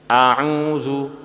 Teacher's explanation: Dhammah dinamakan dhammah karena menggabungkan kedua belah bibir atas bawah kemudian dikerucutkan ke depan